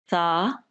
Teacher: जुबान की नोक को सामने के दो दांतों के किनारों के साथ जब आप लगाएंगे तो ये अदा होगी, और नरमी उसके अंदर रखेंगे ताकि सीटी की आवाज पैदा ना होने पाए।